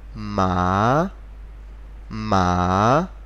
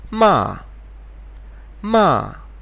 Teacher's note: to pronounce it pronounce it as if you were angry so just go down with your voice all of a sudden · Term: the fourth tone